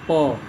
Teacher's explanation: हम बोलते हैं प तो हमारा प जब बोलते हैं तो ओठ हमारे सट जाते हैं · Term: स्पर्श व्यंजन